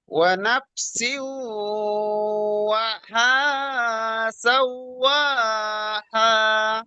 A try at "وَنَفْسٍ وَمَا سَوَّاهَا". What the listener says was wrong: এই মাটা ছেড়ে যাচ্ছে।